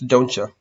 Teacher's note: A lot of times the T will become a ch sound